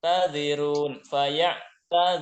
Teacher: Zinya pendek langsung ke ru.